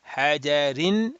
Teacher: If we were to read in a continuous basis to the next word, we'll say hajarin, whatever is going to come in, hajarin, because of the kasratain, ra will be read flat.